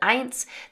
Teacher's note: we have that T sound between the N and the S here at the end of the word, eins. Then we have the zw here, zwei.